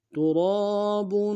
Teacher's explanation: را کو موٹا ادا کریں گے، را کے ساتھ الف مدہ ہے، ایک الف دار میں کھینچیں گے، با کے اوپر تنوین ہے، غنہ کریں گے.